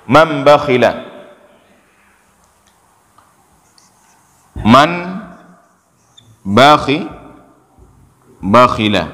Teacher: Maka ketika bertemu nun dengan ba, nun ini kita balik. Ya, kita balik jadi apa? Jadi mim. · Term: iqlab